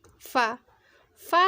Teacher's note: सनाया उलिया के किनारों को नीचे वाले होंठ के अंदर वाले हिस्से से मिलाएंगे तो वो फा की आवाज़ निकलेगी